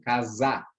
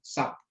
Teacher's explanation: Esse S aqui no meio, ele faz um som de um Z